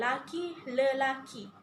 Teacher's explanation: bunyi-bunyi vokal dalam suku kata pertama perkataan yang digandakan itu mengalami perubahan menjadi vokal tengah iaitu i pepet.